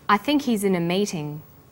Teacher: The word think is stressed in this sentence, and he's is unstressed. When these words are linked, the H is dropped.